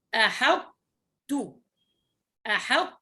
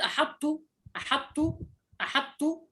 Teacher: الرواية هنا بالإدغام، لكن الإدغام غير كامل، بمعنى أنه تبقى صفة الطاء وتدغم في التاء. فنبدأ بطاء مطبقة مستعلية وننتهي بتاء مرققة مستفلة